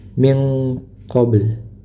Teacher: nun bertemu dengan huruf qof, maka dibaca ikhfa ya. dibaca ikhfa disertai dengan dengung